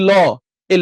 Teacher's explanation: ল উচ্চারণ করার সময় জীবের পিছনটা কিন্তু লাগে না ডগাটা গিয়ে তখন দাঁতের মূলে লাগে